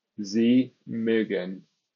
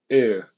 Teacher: Once again, the sound in mögen is an umlaut, which means that the U vowel is going to be fronted